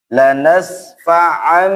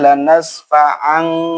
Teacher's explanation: Tanwin setelahnya ada ba, maka tanwinnya berubah menjadi mim, ya. Namanya iqlab, ya.